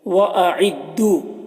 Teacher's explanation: یہاں پر واو ساکن سے پہلے دال کے اوپر پیش ہے تو واو مدہ ہوا، اسے ایک الف کے برابر کھینچیں گے